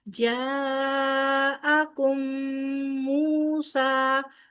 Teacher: میم ساکن کے بعد میم آ رہا ہے تو کیا ہوگا، ادغام شفوی، میم کا میم کے ساتھ ادغام ہوگا لہذا یہاں پر گنہ ہوگا